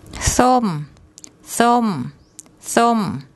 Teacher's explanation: the tone rule for a high class initial consonant and the second tone mark is falling. · there's no written vowel, so we have to add an O sound in between the initial and final consonants